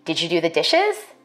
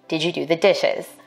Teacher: For white speakers, we expect a rising tone in questions like these.